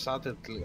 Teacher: You pronounce the L. You just ignore the B.